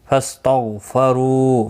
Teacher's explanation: غین مستعلیہ ہے، حروف مستعلیہ میں سے ہے، اس لیے پر پڑھا جائے گا · رو واو مدہ ہے، ایک الف کی مقدار کے برابر کھینچ کر پڑھیں گے. را پر بھی پڑھا جائے گا پیش کی وجہ سے.